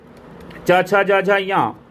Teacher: तालु तालु से बोला जाता है च वर्ग